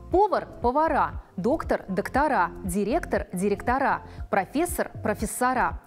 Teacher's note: Другая часть существительных, обозначающих профессию, должность, звание, наоборот, имеет ударное окончание «а» в форме именительного падежа множественного числа